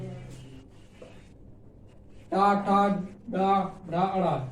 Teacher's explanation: टा को पढ़ते समय जीभ तालु उल्टा हो जा रही, मतलब मूर्धा से